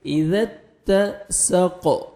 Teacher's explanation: ذال کو نرمی سے ادا کرنا ہے اور تا کو باریک پڑھیں گے